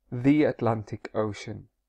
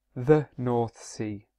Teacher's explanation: when a word begins with a vowel such as Atlantic Ocean if there is a word the before it it normally changes to thee